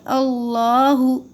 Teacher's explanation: اللہ کا جو لام ہے وہ موٹا پڑھنا ہے